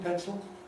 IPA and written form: ˡpensl (pencil)